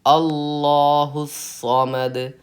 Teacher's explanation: صاد پہ تشدید ہے تو آپ کو 2 حرف کے تاخیر کے برابر سختی کرنی چاہیے. 2 حرف پڑھنے میں جتنا ٹائم لگتا ہے اتنی سختی صاد پہ کرنی ہے.